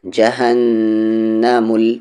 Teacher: نون پر تشدید ہے، غنہ کریں گے